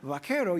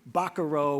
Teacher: take that V make it a B take that second syllable stress put on the first syllable · Take that second syllable stress, put it on the first syllable. Instead of vaquero, you've got something like buckaroo, which rough it up a little bit.